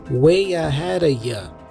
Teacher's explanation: Notice that the A for ahead has a schwa sound